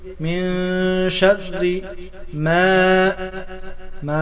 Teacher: من شر ما میں الف مدہ کو ایک الف کے برابر کھینچ کر پڑھیں گے